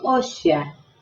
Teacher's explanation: la C en medio de las dos vocales también la convierte casi en una S sibilante